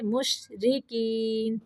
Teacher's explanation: یہاں پہ را کو باریک پڑھنا ہے